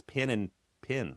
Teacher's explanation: If it's an E followed by a nasal consonant, which means an N or an M, then the pin, pin merger · there's no like decipherable difference between the e and the i